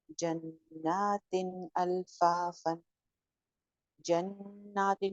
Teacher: एक अलिफ के बराबर हमने जन पे गुन्ना किया और तिन के ऊपर हमने कोई गुन्ना नहीं किया